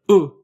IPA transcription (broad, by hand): ʊ